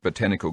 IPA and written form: bəˈtæn.ɪ.kəl (Botanical)